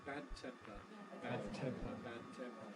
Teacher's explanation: voiced bad and then becomes voiceless bad temper bad temper again the D has no release the T has no approach